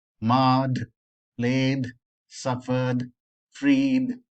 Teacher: we don't add any extra syllable to the pronunciation of the word